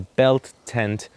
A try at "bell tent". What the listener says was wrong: You can't keep going. You said belt tent. You said belt tent.